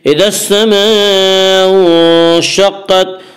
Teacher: الف لام اگر حروف شمسی کے شروع میں ہوں تو الف اور لام کو نہ پڑھیں گے بلکہ بعد والے حرف سے ملا کر پڑھیں گے۔